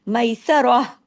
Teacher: ہم رک جاتے ہیں تو یہ تا ہا کی آواز میں بدل جاتا ہے، میسا راہ، اگر رکیں گے تو میسا راہ، راہ ہا زبر راہ، یہ پھر تا نہیں رہے گا۔ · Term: تا مربوطہ